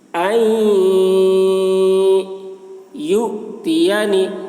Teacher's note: حمزہ میں جزم ہے تو جھٹکا لگے گا۔ یؤتینی خیرا، خا کو موٹی آواز سے پڑھ رہے ہیں، را کو بھی موٹی آواز سے پڑھ رہے ہیں۔